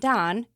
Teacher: Instead of rounding out ow in down, it takes your lips less time to form the sound ah. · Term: monophthongization